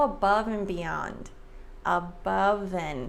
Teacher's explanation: Like 99% of the time, Americans drop the D in and. · So the V sound links to the A.